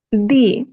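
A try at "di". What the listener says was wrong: No, non è D, deve essere piccolo, piccolo মানে ছোট করতে হবে। D, no D, D। একদম পিক্কলো, একদম ছোট করে উচ্চারণ করতে হবে।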